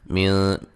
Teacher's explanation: نون ساکن کا اخفا ہے باریک